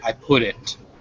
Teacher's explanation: fast in english um you do say i put it and that t becomes that same flapped sound that you hear in batter and butter so yeah that's actually true when we're speaking fast as a